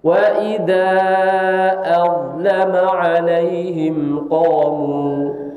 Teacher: Azlama pakai dha isti'la dan jangan diistifalkan. Kalau diistifalkan nanti jadi dal.